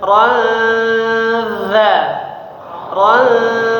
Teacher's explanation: dibaca samar-samar dan dengung ya. Jadi bukan seperti n biasa, bukan nun biasa, bukan ron, tapi mirip seperti eng ya. Suaranya seperti mau mengucapkan huruf dzanya.